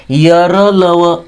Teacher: व यांना अर्धस्वर म्हणतात यांनाच अंत्यस्थ असं सुद्धा म्हणतात ठीक आहे अर्धस्वर का म्हणायचं तर यांचे उच्चार काही प्रमाणात स्वरांसारखे आहेत